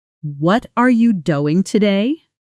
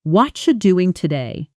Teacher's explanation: Fast, with the stress landing on do and today, and everything else shrinking down small. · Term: reduction